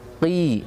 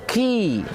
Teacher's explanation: qi hampir sama dengan kaf, tapi bedanya kalau kaf dia mengeluarkan desis angin, tapi qaf tidak mengeluarkan desis angin.